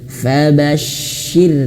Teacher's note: huruf syin dia juga memiliki sifat mengalir nafas dan anginnya bertebaran di mulut